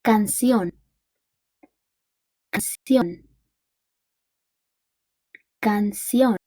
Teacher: the stressed syllable is the last syllable